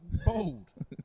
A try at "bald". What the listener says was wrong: You're not saying the same word. I don't know how you're hearing the same thing. Bald, and you're saying bold. Bold. Yeah, bald. It's B-A-L-D. It does. It's not bold. If it's bold, it means like I'm fucking thick.